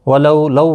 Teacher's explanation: واولین ہے، تھوڑا نرمی کے ساتھ کھینچ کر ادا کریں گے ، لا ایک الف کی مقدار کے برابر کھینچ کر پڑھیں